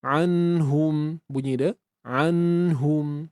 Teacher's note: Dengung yang asli, yang original ada pada nun mati tersebut. Anhum, bunyi dia. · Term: Dengung asli